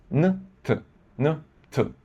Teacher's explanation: N is much closer to T than M in the mouth. In fact, you don't even have to change the tongue position.